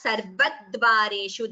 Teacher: there is a slight stress before the double sound. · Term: dvitvam